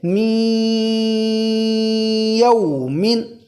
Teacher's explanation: من یومن، نون ساکن کے بعد یا ہے، تو لہٰذا یہاں پر ناک میں چھپا کر ایک الف کے برابر کھینچ کر پڑھیں گے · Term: ادغام